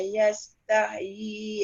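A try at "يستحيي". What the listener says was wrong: Panjang Yastahi tu panjang. Inna Allah la yastahyi an yadriba mathala. Dekat tahyi tu, mak jaiz tu kena baca 4 paling kurang.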